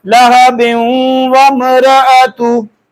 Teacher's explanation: तनवीन के बाद वाओ यरमलून में से इदगाम भी हो रहा है और साथ गुन्ना भी हो रहा है